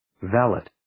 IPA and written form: ˈvælɪt (Valet)